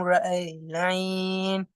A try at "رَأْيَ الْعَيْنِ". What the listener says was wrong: بلا رأي العين அல்ல رأي العين رأي العين رأي العين கடைசி ஹம்சா வந்து ஃபத்தாத்துன்னு படிங்க ஸ்ட்ராங்கா